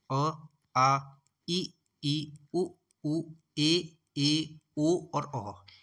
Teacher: तो जैसे ये हो गए निर्नुनासिक स्वर अ, आ, ई, उ, ए, ओ और औ। ये दोस्तों निर्नुनासिक स्वर की कैटेगरी में आएंगे, क्योंकि इसमें नाक का प्रयोग नहीं हो रहा है।